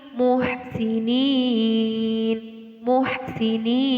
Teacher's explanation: cara membacanya panjangnya satu Alif dua Alif sampai tiga kali